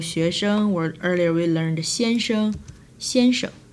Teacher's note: So you say 学生. Remember, the 生 normally go neutral if it's behind another character